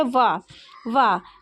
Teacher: इसमें ओठों का भी प्रयोग हो रहा और व और दांतों का भी प्रयोग हो रहा है दांत से भी उ के पास से भी उच्चारण हो रहा